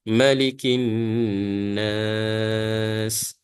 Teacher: Kita kena panjangkan dengung dia sebanyak 2 harakat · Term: wajib al-ghunnah